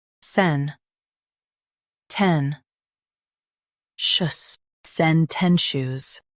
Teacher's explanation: Stress ten and keep shush light.